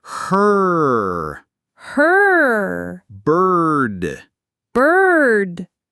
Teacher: The sound as in her. This is the pure tense R sound acting as the vowel.